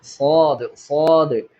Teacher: നാവിന്റെ മുരടും മുരടും മദ്യവും ഒക്കെ അണ്ണാക്കിലേക്ക് ഇങ്ങനെ ഉയർന്നിട്ട് സ്വാ എന്ന് ഉച്ചരിക്കണം വളരെ വായ നിറച്ച് ഉച്ചരിക്കേണ്ട അക്ഷരമാണ്